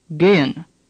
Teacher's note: The second E is pronounced like the second E in Bremen. The H is barely pronounced at all.